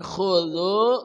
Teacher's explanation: K dari ujung kerongkongan